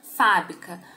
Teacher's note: A sílaba tônica é o fá. Ela é uma palavra proparoxítona.